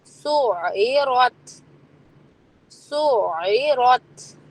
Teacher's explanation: یہ آواز عین کی حلق سے ہی آنی چاہیے زیر میں بھی اور وہ سین کے ساتھ جوائن کرنے میں بھی.